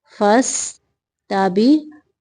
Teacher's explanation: قاف کو موٹا پڑھیں گے